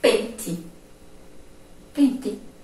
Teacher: algumas pessoas, ao pronunciarem pente, o E soa com som de I